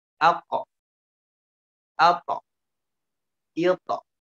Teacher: qalqalah ya yang dibacanya miring ya, tebal ke o ya, seperti o bacanya, tebal